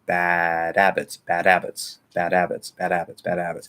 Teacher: But in the flow of normal speech, probably what's going to happen, the H is going to be ignored. Okay. The D, because now when D connects over to a vowel, it likes to flap if the sound before it is also a vowel.